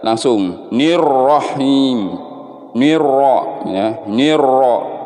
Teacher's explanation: Kemudian di sini ada alif lam, sama penjelasannya seperti ini. Alif lam syamsiyah, dianggap tidak ada alif lamnya atau dihilangkan atau dianggap tidak ada.